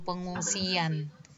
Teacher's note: Jadi kalau ditulis dia itu kan pengungsian. Enggak ada Y sebenarnya. Tapi kalau kita lafalkan itu ada luncuran Y.